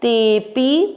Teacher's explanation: आपको ते की मात्रा को लंबा खींचते हुए पी बोलना है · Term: अवग्रह